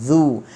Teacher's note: Zal pula hujung lidah di hujung gigi atas, bagi depan kena muncung.